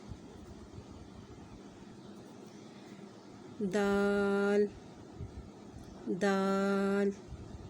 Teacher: خا، خا، اس کا مخرج یہ ہے کہ یہ حلق کا وہ حصہ جو منہ کی طرف ہے وہاں سے خا ادا ہوگا، اور اس کی صفت موٹی ہے، یعنی یہ اس کو ادا کریں گے تو یہ موٹے حروف ہے جو ادا ہوگا، خا، خا۔ دال، دال، اس کا مخرج یہ ہے کہ زبان کی نوک سامنے والے 2 دانتوں کی جڑ پر لگے تو دال ادا ہوتا ہے